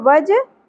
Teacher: جیم ساکن پر قلقلہ بھی ہوگا